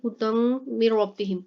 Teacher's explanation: हुदम मिर रब्बिहिम, हुदम, हुदम मिर रब्बिहिम, यहाँ पर देखें हुदम, यहाँ पर देखें दाल है, दाल के ऊपर दो ज़बर है यानी तनवीन आ गई है, और उसके बाद हरूफ यरमलून का मीम आ गया है, ठीक है, तो यहाँ पर गुन्ना करेंगे